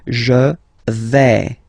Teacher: when you combine this A, I, you get the sound E, really open